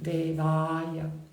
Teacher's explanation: A, you see that there is a long line on top of the A in devāya. It means you drop your jaw and it's a long A. It's an open A.